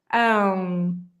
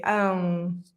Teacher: it's kind of like you're gonna say an m at the end but in fact you don't really complete this sound so your lips never touch each other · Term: nasal sounds